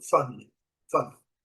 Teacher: Numa conversa rápida aí, a gente vai ouvir family, family, sem a pronúncia do I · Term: som do schwa